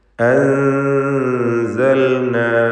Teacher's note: സാക്കിനത്തായ നൂനും ശേഷം സായുമാണ്. ഇഖ്ഫ ഹഖീഖി നൽകി മറച്ച് മണിക്കുക.